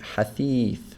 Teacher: So here the tha is being extended, the kasra on the tha is being extended by the ya